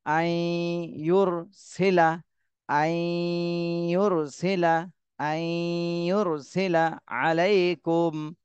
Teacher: নুন সাকিনের পরে ইদগামে বা গুন্না এজন্য গুন্না সহ মিলাতে হবে